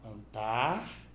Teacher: Antártida é proparoxítona. É proparoxítono porque a antepenúltima sílaba é a tônica.